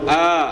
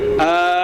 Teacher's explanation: Yang pertama hamzah itu makhrajnya adalah di aqsal halqi. Yang kedua adalah huruf ain yang makhrajnya ada di wastu halqi. Maka berbeda, beda makhrajnya, beda bunyinya.